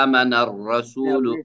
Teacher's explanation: را کے اوپر زبر ہے اور را موٹا ہو گیا